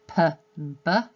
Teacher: they both use both lips, they both are plosive sounds, but a p is unvoiced and a b is voiced